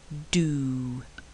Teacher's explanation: and the tongue withdrawn from the ridge to release the pressure this is a voice sound and there is no rush of air but only a tiny explosion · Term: D sound